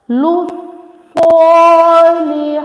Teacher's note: Swad is the bulky letter with standing fattah. So make it long for 1 second.